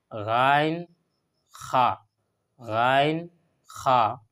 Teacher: চার নম্বর মাখরজ হলো গলার প্রথম ভাগ